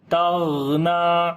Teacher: غین کو موٹا پڑھیں گے اور غین کے اوپر جو صفت ہوگی وہ رخاوت والی صفت · غین کے اوپر قلقلہ نہیں کرنا جیسے تغنا، تغ، ٹھیک ہے، بلکہ آواز کو کنٹینیو کر کے